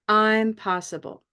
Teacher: And then the word itself says, I'm possible. So again, we'll have a strong I'm, and because it's special, because it's a play on words, we're going to have 2 rises